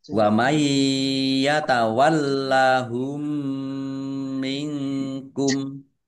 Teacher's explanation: nun sukun bertemu dengan huruf ya, bacaan idgham bi gunnah, masuk dengan mendengung, yaitu mendengung ya. Tandai yaknya ada tasdidnya, ya, ditahan Ya, biar tampak mendengungnya.